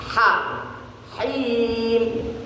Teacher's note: Ha itu makhrajnya di tengah. Wastul halaq di tengah tenggorokan di sini ya.